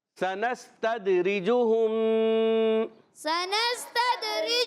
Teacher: سین ادا ہوتا ہے سیٹی کے ساتھ